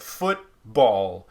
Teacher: ball gets a decent amount of stress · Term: secondary stress